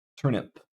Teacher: There's definitely no vibration on the P sound, so this is voiceless, and we just use the letter P for that.